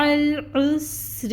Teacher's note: میم کے اوپر فتحہ کی حرکت 1 کاؤنٹ، عین وسط حلق سے نکالیں گے اور حرکت کو ادا کریں گے 1 کاؤنٹ۔ اس کے بعد اس عین کو لام سے ملائیں گے، لام کو ہلائیں گے نہیں، توسط آئے گا۔